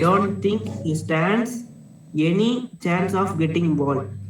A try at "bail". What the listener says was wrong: Getting bail, not ball. Bail. Read it again.